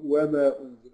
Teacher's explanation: يعني مد ماده طبيعي حركتين خالص